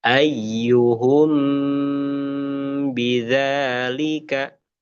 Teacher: ketika kita menemukan mim sukun dengan ba ini, maka kita bacanya ya, maka kita baca dengan dengung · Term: ikhfa syafawi